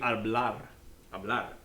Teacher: One of the things that you can't see on this word right here is that when the letter R shows up in the end of a word, it also rolls. Maybe not quite so pronounced as the R in the beginning, like R, but it's more than a flip, maybe less than a long roll.